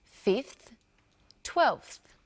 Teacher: the ones with a V sound five and 12 change their V sounds to F sounds